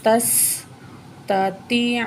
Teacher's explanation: یہاں تا کو جو ہے باریک کر کے پڑھیں گے اور سین کے ساتھ ملائیں گے